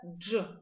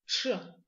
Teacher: Дж, как в слове джунгли, звонкий звук. Ч, похож на звук дж, но более глухой.